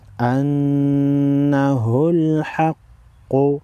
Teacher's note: قاف پیش قو انہ الحق نون مشدد پر غنہ کریں گے قاف حروف مستعلیہ میں سے ہے موٹا پڑھیں گے